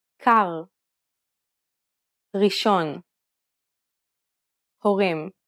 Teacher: the tip of the tongue at the front of the mouth the Hebrew R is pronounced using the back of the tongue with a slight roll you can think of it like gargling Air at the back